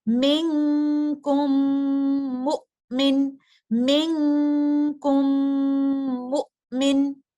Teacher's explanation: میم ساکنہ متحرک میم کے اندر مرج ہو رہا ہے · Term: ادغام الشفوی